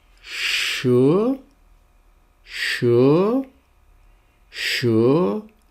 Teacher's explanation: Now we have the last of the pairs which is the sh [gasps] and Now with this one you make your lips round like this [sighs] and then blow. And the air will come from the sides of your mouth because your lips are round. and you'll get a sh sound. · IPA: ʃ